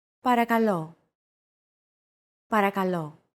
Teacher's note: Don't forget that words get accentuated in Greek, so make sure to stress that final syllable with the accent mark